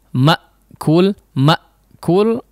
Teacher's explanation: huruf hamzah disini memang karakternya adalah suaranya terputus ya Emak cool disebabkan apa tertutup rapat nya antara kedua Sisi